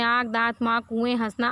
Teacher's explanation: इसमें चंद्रबिंदु लगा हुआ है जिसमें क्या है इसका उच्चारण नाक और मुंह दोनों से होता है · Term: अनुनासिक